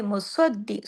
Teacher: پھر آگے مصدق، سواد موٹا بھی، سواد کو سختی سے دال کے ساتھ جوڑنا بھی